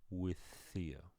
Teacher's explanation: we linked these two because it's the same consonant and one word ends with it and the next begins with it they stretch out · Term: linking